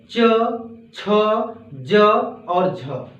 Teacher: ये जो होते हैं स्पर्श संघर्षी व्यंजन वर्ण के अंतर्गत आते हैं